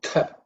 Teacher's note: Tha is second letter in the tha varga, so it has to be aspirated with some extra air and stress